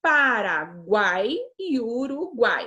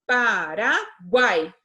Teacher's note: São o a e o o na mesma sílaba. Quando eu tenho três vogais na mesma sílaba, aí a gente tem um tritongo